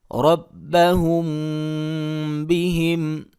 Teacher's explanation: یعنی کہ ہونٹوں کے ساتھ اخفا کریں گے، غنہ ہونٹوں کو بند کرنے کے ساتھ کریں گے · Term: اخفا شفوی